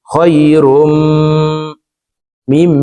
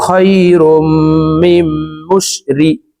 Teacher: ইদগামে বা গুন্নার চার হরফের একটি হরফ মিম আসছে এই কারণে এই তানউইন ওয়ালা রটি তাসদীদ ওয়ালা মিমের সাথে গুন্নার সহিত মিলাইয়া পড়ব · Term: ইদগামে বা গুন্নাহ